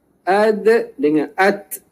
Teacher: Huruf ta dan huruf dal, makhrajnya ialah hujung lidah bersama pangkal gigi atas hadapan.